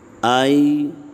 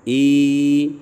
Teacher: آئی یائے لین ہے اور ای میں یائے مدہ ہے، یائے مدہ کو ایک الف کی مقدار لمبا کریں گے اور لین کو نرمی سے پڑھیں گے، لمبا نہیں کریں گے